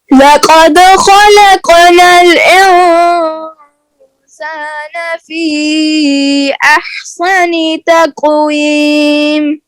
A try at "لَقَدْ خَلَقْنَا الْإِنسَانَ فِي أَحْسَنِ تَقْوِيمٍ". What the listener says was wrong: अहसनी की सीन को मोटा नहीं करना, साद बन रही है तो से फी अहसनी तक़वीम।